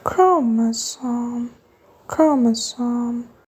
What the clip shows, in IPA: ˈkroʊ.mə.soʊm